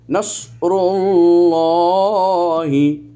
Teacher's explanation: এখানে কোনো মদ পেলাম না আমরা, কিন্তু আল্লাহ শব্দের মধ্যে একটা মদে তাবাই পেলাম খাড়া জবর, এবং আল্লাহ শব্দটি লাফজে জালালা পূর্বে পেশ আসার কারণে এটাকে আমরা উচ্চারণের সময় মোটা করে পড়লাম